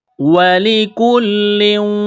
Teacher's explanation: یہ چھوٹا کاف ہے، اس کو باریک کرنا ہے۔ لام کے اوپر تشدید ہے تو لام کو دبائیں گے، سختی کریں گے۔ کاف لام پیش کل لام واو دو پیش لیوں واو جیم زیر وج۔